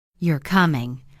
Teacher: If I say you're coming, falling tone, that sounds like a statement.